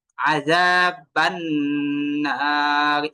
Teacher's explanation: নুনকে আমি নাক থেকে দুই আলিফ টেনে পড়ছি। আযাবান নার, এই যে বান ধরে রাখছি, এই ধরে রাখাটা দুই আলিফ পরিমাণ হবে।